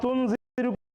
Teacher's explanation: নুন সাকিনের পরে জাল হরফ থাকা কারণে এই নুন সাকিনটাকে নাকের ভিতর লুকায় গুন্না করে অর্থাৎ তুনজির পড়তে